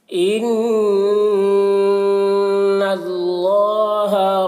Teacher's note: نون مشدد ہے، نون میں غنہ کریں گے اور اللہ کا لام کو پر پڑھیں گے۔